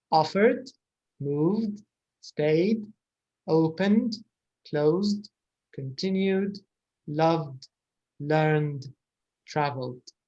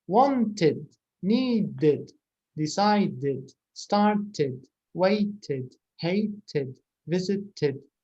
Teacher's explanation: هادو فيهم صوت D من غير syllable جديد